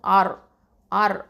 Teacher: அடுத்ததான் ஹம்சா ஃபத்ஹா ரா சுக்குன் ஆர், ஆர் அப்படிங்கிறது வந்து இந்த ரா வந்து என்ன பண்ணணும், தஃப்ஹீமாக ஓதணும், அதாவது ஹெவியாக ஓதணும்.